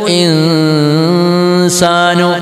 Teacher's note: ഇഖ്ഫാ ചെയ്യണം. സാക്കിനായ നൂനിനെ നമ്മൾ ഇൽഹാർ ചെയ്യാതെ, വെളിവാക്കി ഉച്ചരിക്കാതെ തരിമൂക്കിൽ നിന്ന് രാഗം കൊടുത്തുകൊണ്ട് ഉച്ചരിക്കണം. · നൂൻ ഉച്ചരിക്കാൻ വേണ്ടി നാവ് പോകാൻ പാടില്ല, സീൻ ഉച്ചരിക്കാനാണ് നാവ് പോകേണ്ടത്. അതിന്റെ ഇടയിൽ വെച്ച് നമ്മൾ തരിമൂക്കിൽ നിന്ന് നൂനിന്റെ സിഫത്താകുന്ന ഒന്നത്ത് കൊടുക്കണം.